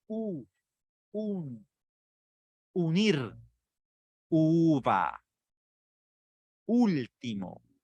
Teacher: La mandíbula no está tan abierta ni está totalmente cerrada. Es un promedio medio bajo de apertura y la proyección de los labios es hacia el frente.